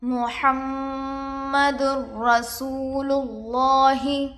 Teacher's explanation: دال پر 2 پیش ہے، تنوین ہوگا۔ تنوین کے بعد حروف ادغام میں سے را آ کر ہے، اس لیے بغیر غنہ کے ملا کر پڑھیں گے۔ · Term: ادغام بلا غنہ